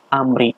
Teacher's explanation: ada mim mati bertemu dengan ro, dibacanya jelas amri, namanya idhar syafawi